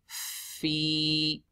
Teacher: حرف مد preceded by a كَسْرَ We stretch it حركتين. فِي Put the upper teeth on the lower lips and blow the air so that the فَا is audible.